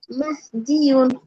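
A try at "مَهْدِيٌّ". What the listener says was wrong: মাহদিয়ুন, মাহদিয়ুন, তাসদীদ আছে।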